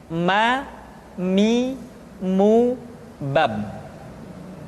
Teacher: huruf ma diucapkan dengan cara merapatkan dua bibir.